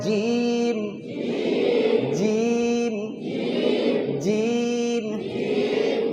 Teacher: জিম কেমন করে উচ্চারণ হবে? জিবের মাঝখান আর উপরের তালু, জিবের মাঝখান উপরের তালু, আর শেষে 2টা ঠোঁট মিলে যাবে শব্দ শেষে, জিম। টেনে বলেন, জিম, জিম, জিম।